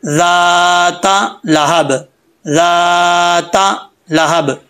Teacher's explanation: दाल के आगे जो अलिफ है ये अलिफ भी पढ़ा जाएगा, इसको नहीं छोड़ेंगे। अगर इसको छोड़ देंगे तो मिस्टेक होगी, ठीक है।